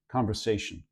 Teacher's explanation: some people, even rhotic speakers, will sometimes drop that R and say conversation, and it doesn't even quite get to that R sound.